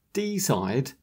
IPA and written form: 'dɪsaɪd (decide)